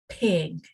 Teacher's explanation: There's actually no vibration. It's just P. It's a puff of air.